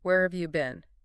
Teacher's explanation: Where have you been? Usually goes down at the end.